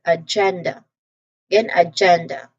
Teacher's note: So emphasize on the gen syllable and we get agenda.